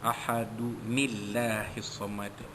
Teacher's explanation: lafaz jalal itu bertukar menjadi tarqiq ataupun nipis, kerana nun baris bawah itu